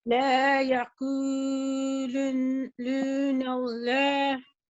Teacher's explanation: 2-count nasalization for the Noon Shadda, which is today's rule